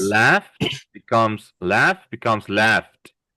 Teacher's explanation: as if we're saying a T, putting a T at the end